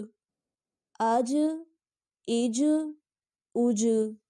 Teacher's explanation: جیم بھی کلکلا حروف ہے، اس کو بھی پڑھتے ہوئے آواز واپس کی طرف لوٹے گی